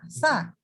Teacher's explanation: Hams itu keluar udaranya. Tapi yang menyebabkan dia bersambung adalah karena dia sifatnya namanya rohwah. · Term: huruf sa